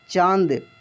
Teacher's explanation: जो उच्चारण होता है ये चंद्र बिंदी का नाक से होता है, अनुनासिक स्वर है